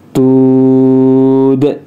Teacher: Dalnya harus disukunkan dan huruf dal termasuk qalqalah, maka harus dipantulkan ya. Tud gitu ya, dipantulkan daknya ya.